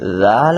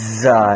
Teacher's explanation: رال نرمی سے پڑھیں گے اور زا سیٹی کے ساتھ پڑھیں گے